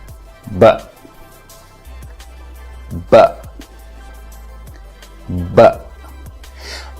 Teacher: Second, that this is a voiced sound. That means you use your vocal cords to produce the sound. And third, and most important, that this is a plosive, which means when you produce the sound, it feels like a minor explosion out of your mouth.